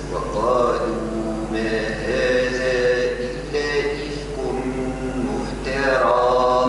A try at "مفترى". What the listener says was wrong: لا، ما قلش مفترى، كيك صار تمطيط في التاء. مفترى، شوف مفترى، أما وقت نقول مفترى تاء هكذا تمطط الحرف، تولد حرف. لا، مفترى هكذا. مفترى.